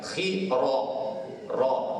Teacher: Di sini ra ni baris mana? Baris fathah. Bila baris fathah ni jelas dah kita kena tebalkan dia, angkat lidah bagi tinggi.